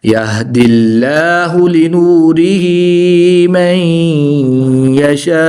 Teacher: नून साकिन के बाद या हरूफ यरमालून में से है तो यहाँ पर भी इदगाम माल गुन्ना होगा यानी गुन्ना करके पढ़ेंगे